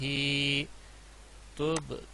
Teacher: تب با پہ کلکلہ ہوگا.